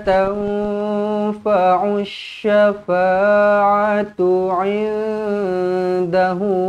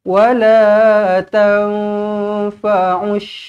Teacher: kena dengungkan dengan dua harakat di sini ikhfa Hakiki